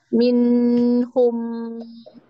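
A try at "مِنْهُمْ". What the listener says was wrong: Iya, tapi nggak boleh lama-lama juga. Minhum. Cukup.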